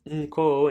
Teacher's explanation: it's not the proper consonant na, the N consonant. It's actually the syllabic nasal